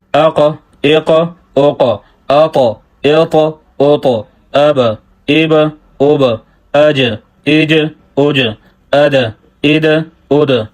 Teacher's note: ایک یہ ہے کہ قلقلہ کرنا، دوسرا یہ ہے کہ قلقلہ کرتے وقت حرکت کا نہ بن جانا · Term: حروف قلقلہ